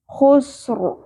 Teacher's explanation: ہم نے ساکن کر کے بھی رو کو پر ہی پڑھنا ہے، کیونکہ رو ساکن سے پہلے حرف ساکن ہے اور اس سے پہلے پھر جزم سے پہلے پھر پیش ہے، اس لیے رو پر پڑی جائے گی۔